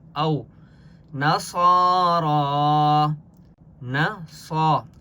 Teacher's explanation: صاد کے اوپر کھڑا زبر ہے، ایک الف کی مقدار کھینچ کر پڑھیں گے